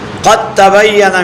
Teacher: قد تبین میں دال کا تا میں ادغام ہوا ہے، دال الگ حرف ہے، تا الگ حرف ہے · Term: ادغام متجانسین